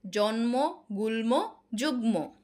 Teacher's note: কিছু কিছু ক্ষেত্রে ম এর উচ্চারণটা আবার বজায় থাকছে কি ক্ষেত্রে যখন সেটা শেষে থাকছে